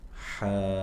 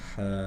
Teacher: Kita baca dengan mad atau isba' ya, 6 harokat. Kemudian ada nabr atau penekanan ketika beranjak dari mat ke huruf bertasydidnya, seperti di ayun ya.